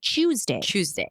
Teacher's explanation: he would always pronounce the word tuesday with a ch in the front